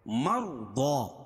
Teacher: ضاد کو موٹا پڑھیں گے کیونکہ حروف مستعلیہ میں سے حروف مستعلیہ 7 ہیں جن کا مجموعہ خص ضغط قض ہے.